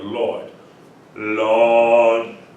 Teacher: I start with my tongue up for the L, Lord, and then it snaps back down to its default position and just stays there.